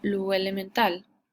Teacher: en algunos lugares esta o sube y se pronuncia básicamente como una u Entonces esta se pronuncia como Lu elemental en vez de lo